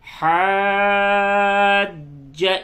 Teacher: دو جیم نکلے گا، جیم پہ تشدید ہے، جیم مشدد ہے